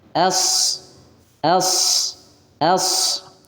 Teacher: shad pangkal lidah kita terangkat karena dia huruf isti'la yang di mana pangkal lidahnya terangkat